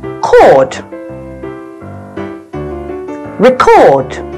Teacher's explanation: However, when the word becomes a verb, the pronunciation is different. We read it record, with the stress falling on the second syllable.